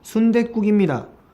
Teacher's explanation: 디귿 소리 첨가에 의한 된 소리 되기가 됐어요